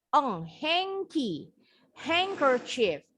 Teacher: Bacanya D-nya silent. Huruf N-nya makanya nih bunyinya jadi eng ya.